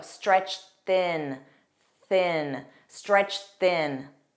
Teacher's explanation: And notice that pronunciation, because we have stretched that ends in a T sound, that ED is pronounced as T, but then thin begins with an unvoiced TH, so we're going to combine that together and say stretched thin.